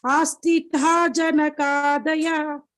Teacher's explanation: But the ending ta is not Mahaprana.